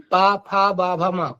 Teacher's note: पाफा बाभा माँ, ओंठ से ओंठ टकरा रहा है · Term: ओष्ठ वर्ण